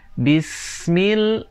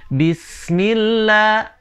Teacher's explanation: huruf S diperpanjang sampai ketemu dengan huruf mim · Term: dimatikan dan dilebur